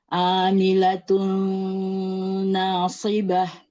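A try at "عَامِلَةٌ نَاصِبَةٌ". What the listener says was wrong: Buka lagi huruf ainnya, jangan seperti Hamzah.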